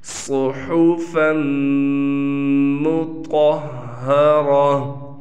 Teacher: رسول من اللہ یتلو، لام واو پیش، لو حروف مدہ میں سے ہے، یتلو صحفا مطہرہ، صاد کو ہم موٹا پڑھیں گے، ہا کو واضح طور پر پڑھیں گے